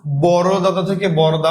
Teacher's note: এই যে দাদা ছিল একটা দা বাদ দিয়ে দিলাম। এটাকে বলা হচ্ছে ব্যঞ্জন চুতি।